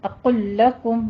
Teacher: اقل لکم میں لام کا لام میں ادغام کرنا ہے، اور لیکن اس کو لمبا نہیں کرنا، اقل لکم نہیں کہنا، اقل لکم بس صرف دونوں کو ملانا ہے.